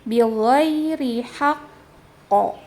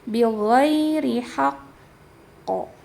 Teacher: Ditahan dulu tahan dulu posisinya karena dia adalah tasydid. Jadi jangan langsung haqqo tapi bighhairi haqqo ya.